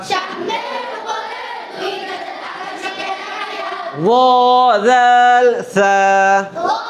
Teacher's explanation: পেট ও আগার সঙ্গে লাগায়া সদ সিন জা। 13 নম্বর মাখরাজ জিহ্বার আগা সামনের উপরে 2 দাঁতের আগার সঙ্গে লাগায়া ওয়াল সা